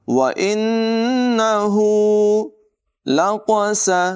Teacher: व इन्नहु लक़स, क़ाफ़ की आवाज़ पर होगी, सीन में सीट की आवाज़ नुमायाँ करेंगे। मीम पर तनवीन है और तनवीन के बाद लाम हुरूफ़ मालूम में से है, इसको मिलाकर बग़ैर गुन्ने के पढ़ेंगे।